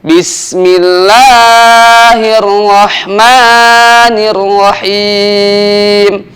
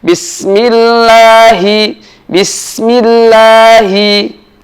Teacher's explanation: lafzul jalalah itu dibaca dua harokat untuk panjangnya. Nah, ketika lafzul jalalah ini dibaca dua harokat, maka hati-hati memanjangkannya supaya tidak melebihi dari kadar dua harokat.